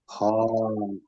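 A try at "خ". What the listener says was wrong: হ্যাঁ, মুখটা গোল হচ্ছে না, মুখটা সিম্পল না, একটু গোল হচ্ছে।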